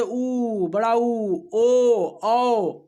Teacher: जिसमें वृत्त के आकार का हो जाता है ओठ, उसे वृत्तमुखी कहते हैं